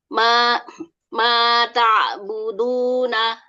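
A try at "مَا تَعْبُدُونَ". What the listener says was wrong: Arfu tipis, ain tipis, jangan sampai mata. Du ditahan, jahra syiddah ditahan. Nafas udara, nafas sama suaranya. Ya, ainnya masih bermasalah. Insya Allah nanti di namanya diperbaiki di makhraj halq ya. Jadi yang ain di situ dia mempunyai sifat apa? Tawasud ya. Yang mana ya bainiyah atau tawasud. dia itu tertekan sedikit, ditahan sedikit tapi masih tetap mengalir.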